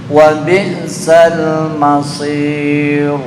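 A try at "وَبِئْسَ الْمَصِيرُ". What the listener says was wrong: Itu tafkhim. Masir tipis. Masir. Sampai gigi kelihatan, itu berarti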